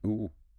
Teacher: Lips are quite rounded, maybe more closed than O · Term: long U